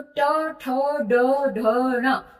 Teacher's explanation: उस स्थान को हम बोलते हैं मूर्धा, यानी कि मुख के अंदर ऊपर वाला स्थान मूर्धा। तो ट वर्ग को हमने मूर्धा वाले कॉलम में रखा क्योंकि मूर्धा इसका उच्चारण स्थान है